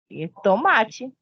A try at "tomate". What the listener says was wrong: Mas você pronuncia com T no final. Você não pode falar no espanhol desse jeito. É tomate.